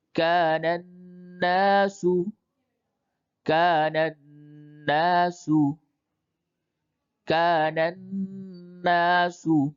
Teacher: اب حروف شمسی: اذا الشمس، اذا الشمس، اذا الشمس، كان الناس، كان الناس، كان الناس، یہاں پہ نون مشدد ہے، اس جگہ پہ غنہ کر کے پڑھیں